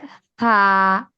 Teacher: থা যখন আমরা বলি, তার উচ্চারণ একদম নরম, উপরের দুই দাঁতের আগার সঙ্গে লাগবে